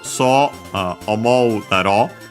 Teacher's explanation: on its own technical accent on the ro of daro